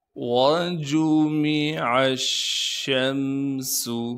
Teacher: شین پر تشدید ہونے کی وجہ سے تھوڑا سا ٹھہراؤ رکھیں گے اور شین کی آواز کو صاف کر کے ادا کریں گے۔ شین کو آگے میم ساکن سے ملائیں گے بغیر غنہ کے، سین کی سیٹی کو صاف کر کے ادا کرنا ہے بغیر کھینچے۔ · واو کو بغیر کھینچے پڑھیں گے، اسی طریقے سے جیم کو بھی بغیر کھینچے پڑھنا ہے، میم کو بھی ہم بغیر کھینچے پڑھیں گے، عین کو ہم شین سے ملا دیں گے کیونکہ شین پر تشدید ہے، شین سے پہلے لام بھی موجود ہے، الف بھی ہے، ان دونوں حرفوں کو ہم نہیں پڑھیں گے۔